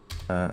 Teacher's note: I'm saying uh uh by nasalizing it.